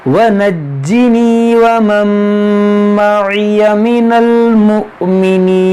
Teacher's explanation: نون ساکن کے بعد میم یہاں پر ادغام کریں گے